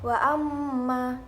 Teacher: jelas di mulut Hai yang terakhir ayat ke-11 wa-ammaa terdapat bacaan ghunnah musyaddadah karena ada mim bertasydid dan cara membacanya masuk dengan mendengung